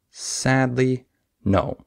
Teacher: stress that first syllable And I stress no sadly no so stress and then not as much stress and then stress